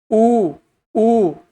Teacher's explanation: ओष्ठ मतलब होठ। उ ऊ आपके होठ वृत्ताकार रूप में बदलते हैं।